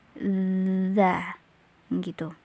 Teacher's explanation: Posisinya ujung lidah bertemu dengan ujung gigi seri atas